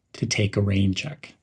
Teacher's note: link take and a as take a rain check and emphasize the word rain